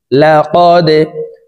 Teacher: দাল কলকলার হরফ নিচের দিকে ধাবিত করে ধাক্কা দিয়ে উচ্চারণ করব। লা কদে, খ জবর খ, লাম কফ জবর লা, কফ কলকলার হরফ উপরের দিকে ধাবিত করে ধাক্কা দিয়ে উচ্চারণ করব।